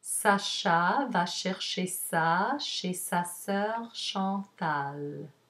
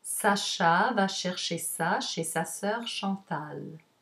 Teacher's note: Notice at the end, the intonation drops to mark the end of the sentence